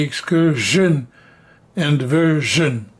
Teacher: both version and excursion are pronounced with a j rather than sh. Some people say excursion, which is wrong.